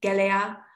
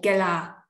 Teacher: the final vowel of the noun can either be retained or not. And when it's not, the clitic vowel is long.